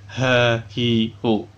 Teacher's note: Ha. Makhraj huruf ha adalah tenggorokan bagian bawah.